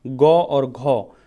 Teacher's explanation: जब हम यहाँ पर बोलते हैं ग और घ तो हमारी ये कंठ से आवाज़ निकलती है।